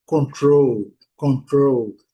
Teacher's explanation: Então, a sílaba forte é a segunda.